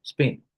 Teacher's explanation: where the p is unaspirated